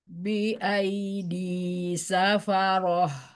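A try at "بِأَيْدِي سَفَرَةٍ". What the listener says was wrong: Tarik ya, bibirnya nggak panjang. Bi'aidi safaroh.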